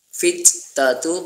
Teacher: Fit tu kita baca hamas, angin, kita perangin sikit